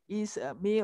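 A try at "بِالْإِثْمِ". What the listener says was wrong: Ah, jaga sa. Jangan isa. Bil ismi wa antum. Keluarkan ujung lidah.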